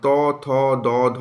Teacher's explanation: আমাদের জিহবার অগ্রভাগটা আমাদের দাঁতে স্পর্শ করছে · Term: দন্ত বর্ণ, দন্তবর্ণ